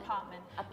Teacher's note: You don't really pronounce the T's